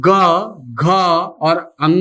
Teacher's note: ग का उच्चारण करते समय हमारी स्वर तंत्रिका में कंपन होगा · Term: सघोष वर्ण